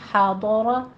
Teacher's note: حاضر ہا وسط حلق سے باریک آواز کے ساتھ، ضاد کو پر پڑھیں گے. حاضر را کو مفخم پڑھا جائے گا، اسی طرح ضاد کے ساتھ را کو بھی